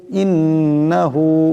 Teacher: জের ইন নুন জবর না ইন্না হা উল্টা হবে ইন্নাহু এখানে নুন মুশাদ্দা এক পরিমাণ গুণ্য হবে